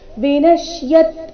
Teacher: ಶ ಅಧಿಕ ಯ ಸೇರಿ ಸಂಯುಕ್ತಕ್ಷರ ಆದ ಕಾರಣನ ಮೇಲೆ ಆಘಾತ